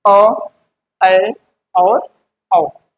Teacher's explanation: ऐसे स्वर जिनके उच्चारण में हमारा जो मुख द्वार है वह लगभग क्या हो आधा खुला होता है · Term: अर्ध विवृत्त स्वर